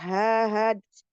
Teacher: Itu ya ee adnal halqi ya pangkal tenggorokan ya dekat pita suara